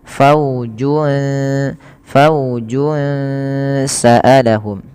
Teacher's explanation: sambil ditahan ngnya dua harakat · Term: ikhfa hakiki